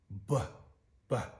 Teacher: slack voice, sort of like a bass version, so to speak